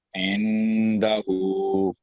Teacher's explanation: تو یہاں پر اخفا ہوگا, 2 سیکنڈ کا گنا ہوگا